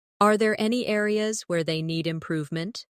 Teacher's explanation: Notice how areas where they flows without breaking.